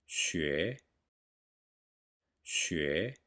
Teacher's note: In 学, the S sound is pronounced with the dorsum of the tongue.